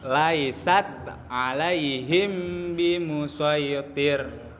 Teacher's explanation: Maka membacanya dengan menyamarkan suara mim dengan suara dengung. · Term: ikhfa syafawi